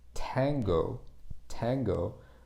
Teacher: the front of your mouth and it's touching kind of the the tongue goes up in the corner between your upper teeth and the roof of your mouth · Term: English T sound